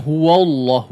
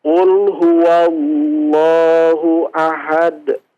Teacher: huwa tidak wo ya wawnya, tapi wa difathahkan